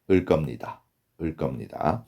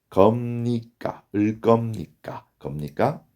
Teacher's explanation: So when you pronounce 버 changes to 머. So this is nasalization. So the correct pronunciation is 을 겁니다.